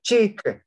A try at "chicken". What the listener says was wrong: Chi. Anh em đọc thành chick rồi. Chi nó là chi thôi đúng không?